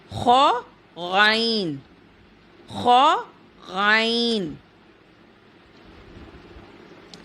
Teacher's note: ادنی حلق، حلق کا منہ کی طرف والا حصہ